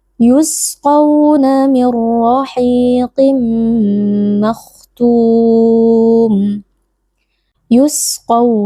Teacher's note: huruf Sin huruf rakhawah kita beri aliran suara dan juga aliran nafas